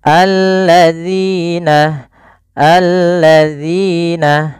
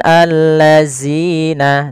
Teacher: huruf zal, yang makhrajnya adalah ujung lidah kita menempel dengan gigi sari atas kita. Alladzina, alladzina, bukan allazina.